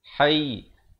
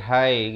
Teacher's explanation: Kalau waqaf hayy, tekankan sedikit ya-nya.